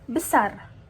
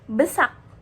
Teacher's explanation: Misal orang Jakarta bilang besar, tapi orang Medan bisa bilang besak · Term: alofon